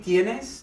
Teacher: In the to form, we have tienes. We notice a little bit of vowel change here, so the stressed E to IE